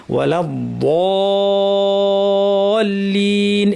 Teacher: সামনাটা লাগবে ঠিক, কিন্তু সামনে কোনো প্রেশার দিব না, সাইড থেকে প্রেশার দিয়ে ওয়ালা দলিন এভাবে সুন্দর করে আমাদেরকে বলতে হবে